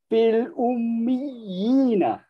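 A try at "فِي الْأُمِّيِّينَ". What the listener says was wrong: Okey, fil Wajibul gunnah jangan tinggal. Fil ummiyina. Okey, itulah maddut tamkin. Kalau kita tak tekan, dia tak jadi maddut tamkin. Okay, itu yang bezakan antara tamkin dengan mad yang asli biasa.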